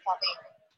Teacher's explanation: Aplicamos la regla de apertura vocálica tanto del fonema U por O como del fonema I por E, quedándonos capello, y con la sonorización del fonema P por B resulta la palabra cabello